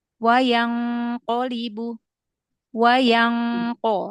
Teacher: Ikhfa yang nun sukun ketemu qof ya di ayat ke9 itu kan tebal ya.